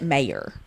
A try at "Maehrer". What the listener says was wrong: But there's another R in there.